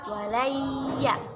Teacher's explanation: Nun sukun bertemu dengan huruf ya. Mu'allimah baca dengan memasukkan kepada huruf ya, walayya, atau bertasydid ya, walayya, dan berdengung kemudian ditahan 2 harokat. Hukum bacaannya ialah ya idgham di gunnah.